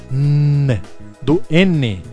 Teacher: Então veja, uma bilabial nasal sonora, o M, do M. Nós temos a linguodental nasal sonora, N, do N, ok?